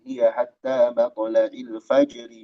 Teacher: Kalau dibaca disambung rnya tipis ya.